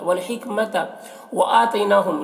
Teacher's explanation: वल हिकमत व आतैनाहुम, यहाँ पर हमज़ा में खड़ा ज़बर है जो अलिफ मद्दा की तरह है, और आतैना में जो या है या लीन है, इसे जल्द पढ़ना है